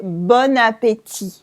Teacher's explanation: So you can forget about the T at the end.